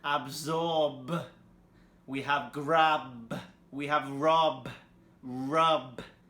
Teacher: here the B is vibrating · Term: voiced sounds